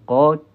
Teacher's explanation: Qaf ini pangkal lidah bertemu dengan kerongkong bahagian anak tekak. Dia dalam sikit lagi lah. Okey. Secara ringkasnya bila saya lukis ini, huruf qaf ni pangkal lidah kita, ni hujung lidah.